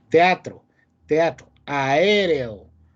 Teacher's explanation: las vocales no están unidas sino que una pertenece a una parte y la otra a la siguiente parte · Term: hiato